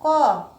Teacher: जैसे मैं कहती हूँ क, तो क बोलने के साथ ही अ का भी उच्चारण होता है।